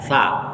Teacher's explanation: Sa itu ujung lidah bertemu dengan ujung gigi seri atas